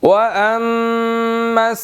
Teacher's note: تو میم مشدد ہے، یہاں پر غنہ ہوگا